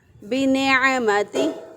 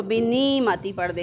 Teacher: اب اگر کوئی عین کی بجائے اس کو حمزہ سے بدل دے، یا سے بدل دے، اس کو بِنِعْمَتِهِ پڑھ دے، اس کو بِنِعْمَتِهِ یا سے پڑھ دے، اس کو یا سے بدل کے پڑھ دے تو غلط ہو جائے گا، حالانکہ یہ عین ہے اور عین جو ہے وہ وسط حلق سے ادا ہوتا ہے